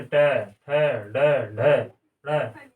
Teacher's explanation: अब आता है ट वर्ग। ट वर्ग के व्यंजन का उच्चारण जो है मूर्धा, तालु के ऊपर वाला जो जगह है हमारे मुंह में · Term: मूर्धन्य